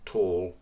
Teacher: a dark l after a vowel so the word tall would have a dark l